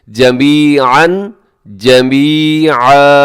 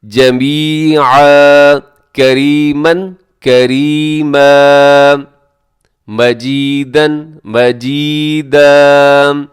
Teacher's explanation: اگر آپ نے جمیعاً پہ وقف کرنا ہے تو آخر میں تنوین ہے. جب بھی دو زبر کی تنوین پہ آپ وقف کرتے ہیں, آپ سٹاپ کرتے ہیں, تو آپ نے کیا کرنا ہے کہ آپ نے اس کو الف کی طرح پڑھنا ہے, الف مدہ کی طرح پڑھنا ہے.